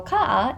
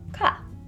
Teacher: these ah vowels just end up merging together into making the one a vowel